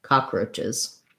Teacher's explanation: And then CHES, when we have something ending in ch and making it plural, it's just an I and a Z sound